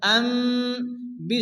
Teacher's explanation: নুনকে মিম দ্বারা পরিবর্তন করে এক আলিফ গুণনা করে পড়তে হয়। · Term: কলব